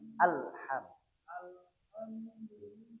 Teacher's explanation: Al tidak boleh memantul, tidak boleh tawalud.